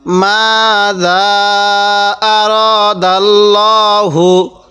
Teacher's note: লাম খারা জবর ল আরদ হা পেশ হু আরদাল্লাহু মা আরদাল্লাহু মিমের মধ্যে এক আলিফ জালের মধ্যে তিন আলিফ